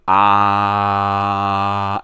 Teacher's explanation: A nice exercise is holding your nostrils like this and going ah, and if the voice changes, then well, you've been using your nose a lot. Apparently it's a pure mouth sound. It shouldn't use the nose at all.